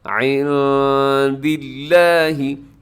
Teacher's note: عند اللہ میں نون ساکن کے بعد دال ہے، یہاں اخفا کیجیے گا، آواز کو ناک میں چھپائیے گا